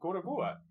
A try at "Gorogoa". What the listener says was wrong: It's not Gora anything, it's Goro!